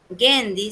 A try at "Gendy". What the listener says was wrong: Buenos días, es Hendy. Hendy, con J. Se escribe con G, pero se pronuncia con J.